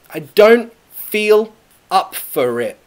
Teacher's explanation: Pronunciation, I don't, that has a glottal T.